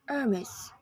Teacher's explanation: This French brand is pronounced Hermes with a stress on the second syllable, whether you're in the US or the UK.